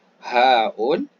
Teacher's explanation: Kemudian haun, ha. Ini kita tekan sedikit di pangkal kerongkong. Berdekatan dengan hamzah sama.